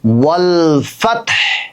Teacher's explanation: ওয়াল, মূলত ওয়াল ফাতহু, কিন্তু যখন আমরা অক্ফ করছি তখন হায়ে জজম হয়ে যাচ্ছে, যার কারণে ওয়াল ফাতহ।